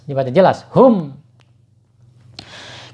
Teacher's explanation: mim sukun bertemu dengan huruf kaf ya. Ini bacanya idhar syafawi ya, mimnya harus dibaca jelas